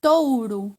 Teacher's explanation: quando eu falo touro eu ouço mais forte o som da vogal ó